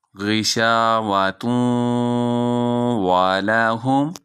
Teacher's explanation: یہاں ادغام ہو رہا ہے، تنوین کے بعد واو یرملون میں سے ہے اور یہاں ادغام بھی ہے اور غنہ بھی ہے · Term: ادغام مع الغنہ